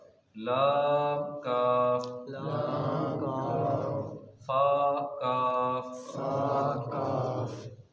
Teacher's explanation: ये काफ मोटा पढ़ेंगे, पुर पढ़ेंगे और ज़ुबान की जड़ और तालु के नरम हिस्से से पढ़ेंगे। दूसरा काफ है उसे बारीक पढ़ेंगे, ज़ुबान की जड़ और तालु के सख्त हिस्से से अदा करेंगे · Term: बारीक वाला काफ